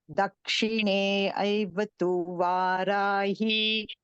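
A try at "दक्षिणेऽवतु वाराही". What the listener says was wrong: So Dakshine Vatu is a combined word. Don't use the syllables separately there. So otherwise you'll get 9 syllables and you will not know how to chant it. Dakshine Vatu Varahi.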